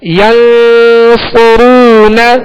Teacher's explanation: صاد پر پیش ہے، آگے واو مدہ ہے، ایک الف کی مقدار کھینچ کر ادا کریں گے. آخر میں نون پر صرف زبر ہے، آواز اور منہ کھول کر بغیر کھینچے ادا کریں گے